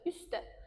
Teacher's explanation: Üstdə baxırıq ki, t düşdü.